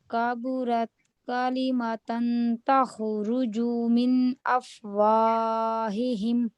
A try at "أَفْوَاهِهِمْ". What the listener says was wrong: افواہہم. آپ نا مد کو یا تو بہت سٹریچ کر جاتی ہیں یا بالکل ہی نہیں کرتی.